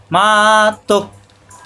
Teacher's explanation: তোক শক্ত হবে, গলার ভিতরে আটকে যাবে, বাড়ি খাবে না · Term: হামজায় সাকিন